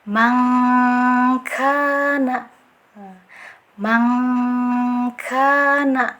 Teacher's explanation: dia lebih ke eng ya bunyinya karena jauhnya itu, posisi makhrajnya itu jauh ya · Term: ikhfa abad